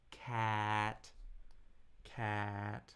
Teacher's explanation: a flat High unchanging tone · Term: first tone